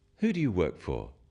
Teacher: when you ask people questions about themselves in English use a falling tone it sounds friendlier